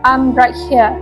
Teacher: The original accent features roty city, meaning the R in here is pronounced. Also, I'm is often realized as M, which is common in African English and adds directness